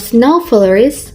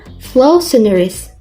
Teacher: Contoh, niat bilang snow flurries, keluar flow sonorous. Bunyi awal kedua kata saling bertukar tempat. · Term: Sound error